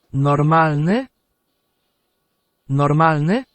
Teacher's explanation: Now just like in English we can flip a word from being a statement into being a question. Uh we just exactly as we do in English need to raise our pitch a little at the end.